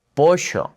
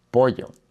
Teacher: in certain countries and certain areas of the Spanish speaking world, yes, it does kind of have a j sound. For example, in a place like Buenos Aires, Argentina, they might say something like poisha, which sounds much different than pollo.